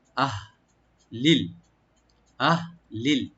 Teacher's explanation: তো আহলিল, হামজাকে রাইট দিবেন আর হাটাকে রাইট দিবেন। এটা হামজা এবং হা একই জায়গা থেকে আসে, গলা শেষ থেকে। তো হাতে একটু খেয়াল রাখবেন যেন কলকলা ইকু যেন না হয়।